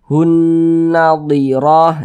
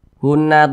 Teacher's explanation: jadi suaranya itu kita tahan kita panjangkan sejenak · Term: ghunah musyaddadah